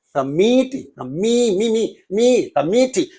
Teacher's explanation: And committee, there are also 3 syllables, committee. So, but in this word, the second syllable receives the stress, not the first one